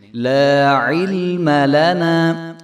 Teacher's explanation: نہ ہی حمزہ کی آواز آئے گی، بلکہ عین کی آواز آئے گی اور حرف کو جو ہے ہلنا بھی نہیں چاہیے، ہم حرف کو ہلائیں گے بھی نہیں.